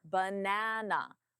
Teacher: Louder and longer. Nah is the stress syllable. B and uh are the unstressed banana.